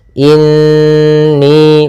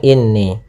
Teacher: cara membacanya kita tahan dulu suara n-nya dua ketukan atau dua harokat. Inni, baru kita baca ni, jangan langsung inni. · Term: hukum gunnah